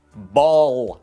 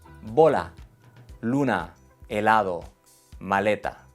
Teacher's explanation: Pero no como la L en call, milk. En español siempre es suave.